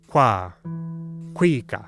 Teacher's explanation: a tricky qu made by rounding your lips